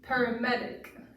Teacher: You hear the stress on the med part. So you want to get louder and increase your pitch and volume on that syllable of the word.